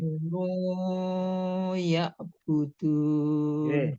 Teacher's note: di situ ada nun domah ketemu wawu sukun jadi panjang